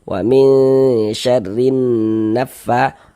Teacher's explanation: Karena enggak ada tanda bacanya ya enggak dibaca. Orang enggak ada tanda bacanya enggak dibaca, langsung diidgamkan, langsung dimasukkan ke huruf setelahnya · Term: idgham syamsiyah